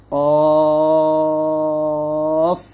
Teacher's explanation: জিহ্বার গোড়া তালু বরাবর উপরে তালুর সঙ্গে লাগিয়ে উচ্চারণ করতে হবে মোটা করে,